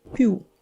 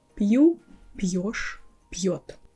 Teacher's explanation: We make softer our п - пь, then before pronouncing the next vowel, we add a little й sound there.